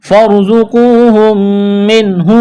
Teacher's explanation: میم کا میم میں ادغام کریں گے، غنہ کریں گے، یہاں پر آواز ناک میں چھپائیں گے · نون ساکن کے بعد حروف حلقی میں سے ہا ہے، اظہار کریں گے